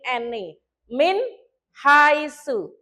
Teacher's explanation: Jadi bacanya nun sukun itu jelas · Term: idhar halqi